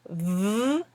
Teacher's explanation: So your top teeth are on your bottom lip. And when you say v, it kind of tickles, it tickles your bottom lip. It makes it move a lot. It makes it vibrate.